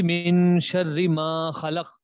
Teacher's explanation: الف مدہ ہے ما خلق میں، اس لیے تو ہم اس کو لمبا کر رہے ہیں